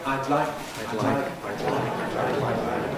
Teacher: And I'd like I would like requires lateral release. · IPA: aɪd ˈlaɪk